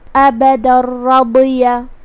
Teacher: را حروف الادغام بغیر غنہ میں سے ہے اور ادغام کا معنی ہے حرف کو حرف میں داخل کرنا، تو ہم یہ تنوین کو را میں داخل کر کے بغیر غنہ کے لیکن تشدید کے ساتھ یہ حکم کو ادا کریں گے. ابدا الرضیہ کلمت رضیہ یہاں را پہ زبر ہے تو ہمیں اس کو تفخیم سے ادا کرنا ہے، جو کہ اس کے بعد حرف الضاد ہے.